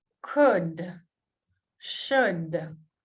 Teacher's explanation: Note how L is silent here.